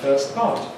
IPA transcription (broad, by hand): ˈfɜːs ˈpɑːt